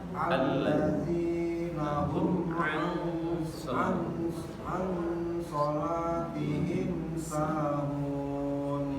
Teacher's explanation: An-nya 2 harokat, ditahan sebentar.